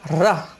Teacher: रा हमारा प्रकंपित व्यंजन है, जिसमें जीभ 3 बार कांपती है